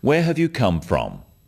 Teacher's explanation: notice also the falling tone with these questions where have you come from this makes the question sound friendly